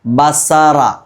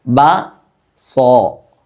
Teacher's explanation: എന്നാൽ സ്വാദായതുകൊണ്ട് ബ സോ, സ എന്നുച്ചരിക്കാതെ സോ എന്ന് ഒരു ഓ എന്നൊരു ഗൗരവത്തോടുകൂടി, ഒരു ഘനപ്പിച്ച ശബ്ദത്തോടുകൂടി ഓതിയില്ലേ, ഇതിനാണ് തഫ്ഹീം എന്ന് പറയുന്നത്.